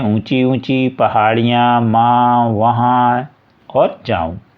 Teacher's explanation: उच्चारण के समय हवा नाक और मुंह दोनों से निकलती है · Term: अनुनासिक